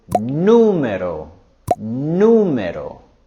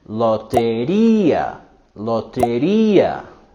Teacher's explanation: going higher in intonation with numero numero and loteria loteria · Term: strong mexican accent